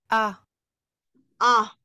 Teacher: Porque, por ejemplo, la A es A en español, pero en francés no es una A abierta, sino que queda como medio abierta